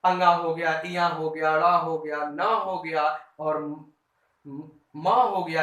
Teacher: इनके उच्चारण स्थान नासिका से होता है अर्थात नाक से होता है। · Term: नासिक्य व्यंजन